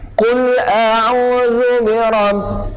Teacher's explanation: Huruf zal nak sebut dia ujung lidah terkeluar sedikit.